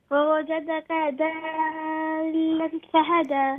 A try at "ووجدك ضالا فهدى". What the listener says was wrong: Not dal. It's not dal. It's a dad. Dalla. Dalla. Fahada.